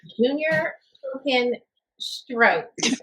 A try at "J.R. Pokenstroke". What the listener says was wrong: It's J.R. Pokenstroke. Not Junior.